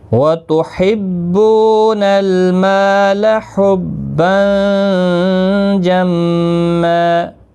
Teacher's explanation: تنوین کے بعد یہاں پر حروف اخفا کا جیم آیا ہے، اخفا حقیقی ہوگا، غنہ کے ساتھ پڑھیں گے، میم مشدد پر غنہ ہوگا